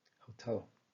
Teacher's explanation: we can identify that the stress falls under the second syllable, hotel.